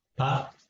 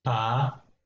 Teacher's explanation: What is the difference between the two? The first one is short one and the second one is long one.